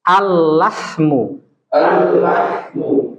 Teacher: Contoh seperti al-lahmu, lam bertemu lam, ya kan? Makhrajnya sama. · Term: idgham